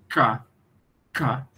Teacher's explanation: No som K, a obstrução se localiza no véu do palato.